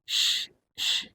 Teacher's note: Tengah lidah naik ke langit-langit. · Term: huruf shin